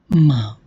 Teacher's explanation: M is a bilabial sound, M is a voiced sound, and is a nasal sound. So the segment is made up of the three features, that is plus bilabial, plus voiced, plus nasal. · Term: voiced, bilabial, nasal